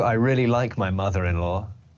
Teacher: know I really like my mother-in-law more that's why there has a small like Arrow linking the two the r and the E together